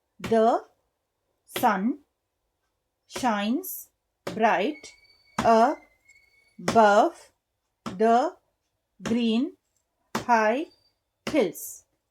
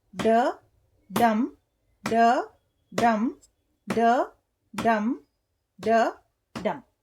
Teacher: That's iambic pentameter. 10 syllables with a soft and strong pattern.